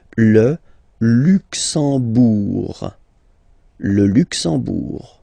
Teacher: You don't pronounce the M at all, it's this nasal en